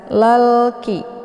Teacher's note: Kemudian lalki, di sini ada alif lam, namanya alif lam al-qamariyah karena sesudah alif lam terdapat huruf qamariyah yaitu kaf. Cara bacanya, alif lamnya dibunyikan secara jelas.